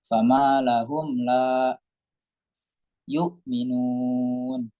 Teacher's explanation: itu ada mim sukun bertemu la. Hukumnya apa? Izhar syafawi. Jelas.